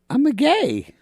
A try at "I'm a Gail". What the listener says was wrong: And put an L on the end of it.